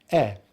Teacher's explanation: the lips are spread just a little bit, the jaw is open, and the tongue is at the front of the mouth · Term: short vowel sound